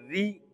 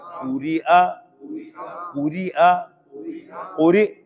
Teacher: را پورے باریک ہے، باریک ہے، کیوں؟ نیچے زیر ہے